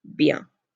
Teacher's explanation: This ends in a nasal again, do not pronounce the N, it's bien.